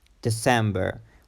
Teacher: The stress is in the second syllable, sem, December.